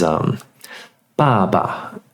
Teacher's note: I'm not good at numbering the tones yet. But the descending tone and then the neutral tone on the second ba · the first ba is the descending tone